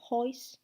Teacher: el sonido O es transformado en OI, como en house sería hois.